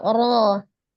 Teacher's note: Ra berharokat fathah dibaca tafkhim atau tebal